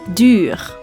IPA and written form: dy:r (Duur)